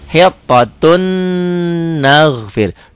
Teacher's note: Tulisannya hittotun ada n-nya, n-nya masuk ke n berikutnya. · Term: Idgham bigunnah